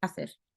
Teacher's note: le C en espagnol, devant un E et un I, on le prononce un peu comme un S, mais comme si on a un cheveu sur la langue. Et c'est hacer, c'est un peu, un tout petit peu.